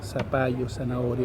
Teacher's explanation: hay una pérdida de la interdental se transforma en s